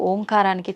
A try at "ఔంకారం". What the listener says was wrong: అది ఓంకారం కాదు, ఔంకారం. మీరు మనం పలకడమే దాన్ని తప్పు పలుకుతున్నాం. ఔం అని ఉచ్చరించినప్పుడు అకారము ఉకారము రెండూ పలకబడి మూకారం దీర్ఘమవుతుంది.